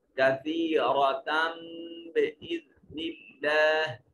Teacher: نون تنوین کے بعد با حرف اقلاب ہے، اس کو چھوٹی میم کے ساتھ بدل دیں گے. کثیرۃ بإذن اللہ، اس میں جلالت کا ما قبل مقصور ہے، مرقق یعنی باریک پڑھا جائے گا.